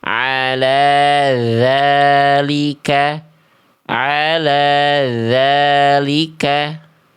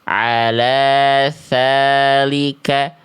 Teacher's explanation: Kalau huruf dalal dia tertahan nafas. Kalau huruf tsa dia mengalir nafas.